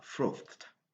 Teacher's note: le verbe qui se termine avec le son th, tel que dans froth. Le passé va nous donner frothed, le son t à la fin.